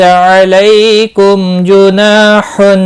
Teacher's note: میم ساکن کے بعد جیم آیا ہے، اظہار شفوی ہوگا، گناہ نہیں ہوگا۔ نا الف مدہ ہے، ایک الف کے برابر کھینچ کر پڑھیں گے۔